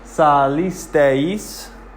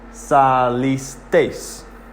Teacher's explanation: E-I is 2 vowels that come together to create a diphthong.